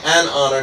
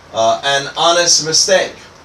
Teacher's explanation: We say an honor because the H is silent. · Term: silent H's